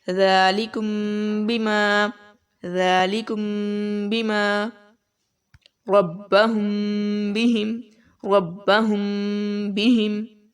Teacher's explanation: میم ساکن کے بعد اگر با آ جائے، ٹھیک ہے، تب ہم وہاں پر غنہ کریں گے، اخفا کریں گے